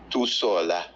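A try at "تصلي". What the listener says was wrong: Tusalli. Tusalli. Tusalli. Tusalli. The reason why I'm being so strict on the shadda is because the shadda is actually two letters there. It's actually it's two lambs.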